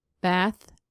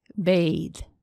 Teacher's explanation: Th, th are a voiceless-voiced consonant sound pair. The mouth, tongue, lips, teeth are in the same place. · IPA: /θ, ð/